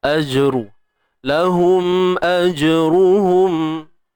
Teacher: Jim yang bertanda sukun di tengah bacaan ni qalqalah sughra, lantunan kecil ataupun lemah.